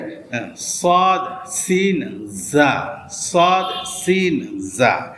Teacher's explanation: জিহ্বার আগা সামনের নিচের দুই দাঁতের পেট ও আগার সঙ্গে লাগিয়ে